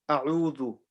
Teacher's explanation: Hamza comes from the bottom of part of your throat. U is the middle part of your throat.